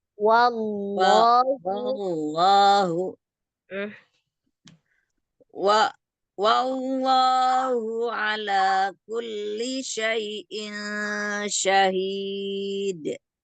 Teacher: Lafaz Allah ketika dia sebelumnya fathah kan tebal, tapi jangan menebalkan waw, jadinya waw loh, tapi Wallahu wallahu ala kulli syai'in syahid.